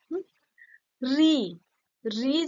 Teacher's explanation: জীভের অগ্রভাগটা মূর্ধায় গিয়ে ঠেকছে তাই না দন্তমূল দন্তমূলের পরে যে মূর্ধা সে মূর্ধায় গিয়ে ঠেকছে · রি যখন আমরা উচ্চারণ করছি, দেখো জিভের অগ্রভাগটা মূর্ধায় গিয়ে ঠেকছে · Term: মূর্ধন্য স্বর